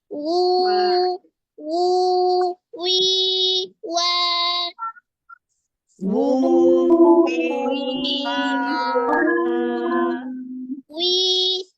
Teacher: tengah lidah diangkat sedikit ketika kasrah diangkat